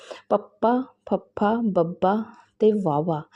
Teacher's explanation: ਇਸ ਤੋਂ ਬਾਅਦ ਅਸੀਂ ਗੱਲ ਕਰਾਂਗੇ ਹੋਠੀ ਵਿਅੰਜਨਾਂ ਦਾ ਹੋਠੀ ਵਿਅੰਜਨ ਪਪਾ ਫਾ ਬਬਾ ਤੇ ਵਾਵਾ ਇਹ ਹੋਠੀ ਧੁਨੀਆਂ ਹਨ ਕਿਉਂਕਿ ਇਹਨਾਂ ਦੇ ਉਚਾਰਨ ਸਮੇਂ ਸਾ ਦੀ ਹਵਾ ਬੁੱਲਾਂ ਦੁਆਰਾ ਸਾ ਦੀ ਹਵਾ ਨੂੰ ਬੁੱਲਾਂ ਦੁਆਰਾ ਰੋਕ ਕੇ ਛੱਡਿਆ ਜਾਂਦਾ ਹੈ